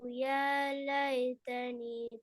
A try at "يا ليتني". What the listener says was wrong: يا ليتني அல்ல நீடணும். يا ليتني.